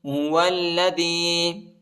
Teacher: واو کو لام کے ساتھ ملائیں گے، لام کے اوپر شد آیا ہے، اس کو شدت کے ساتھ پڑھنا ہے، سختی کے ساتھ پڑھنا ہے۔